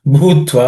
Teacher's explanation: Bhutva in that bhu is again aspirated.